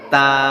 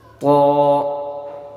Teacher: تا کی آواز کو جب نکالیں گے تو ہونٹوں کو پھیلا کر پڑھیں گے، تا، اور قو کی آواز جب پڑھیں گے تو ہونٹوں کو ہلکا سا گول کر دیں گے